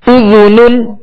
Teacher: ذال کو نرمی کے ساتھ ادا کریں گے، اس میں سیٹی کی آواز پیدا نہ ہو